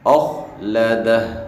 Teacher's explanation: خا کو موٹا پڑھیں گے